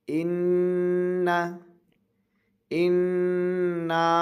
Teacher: یہ نون کو کھینچنا ہے کیونکہ نون کے ساتھ الف مد ہے.